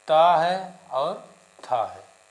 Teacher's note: ता का उच्चारण स्थान क्या है? दंत। और था का दंत।